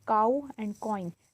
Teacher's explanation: The sound begins as one vowel sound and moves towards another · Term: diphthong